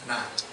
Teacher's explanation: Na is on the back side of the palate.